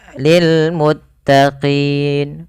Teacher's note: Tatkala adanya sukun arid di akhir bacaan ketika maaf di akhir bacaan kita ketika kita waqaf awalnya lil muttaqina karena kita wakafkan nunnya dimatikan dan apa namanya untuk qi itu kita panjangkan boleh kita boleh memilih antara dua harakat boleh juga empat harakat dan boleh pula enam harakat maka lil muttaqin dua harakat lil muttaqin empat atau en harakat lil muttaqin. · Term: mad arid lisukun